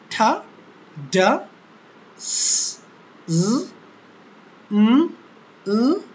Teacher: তারপর হচ্ছে আলভিওলার, অর্থাৎ আমাদের দাঁতের মাড়ির যে অংশটুকু রয়েছে খাঁজকার অংশ, এই খাঁজকার অংশ থেকে উচ্চারিত হয় এই ধ্বনিগুলো, এরা হচ্ছে আলভিওলার।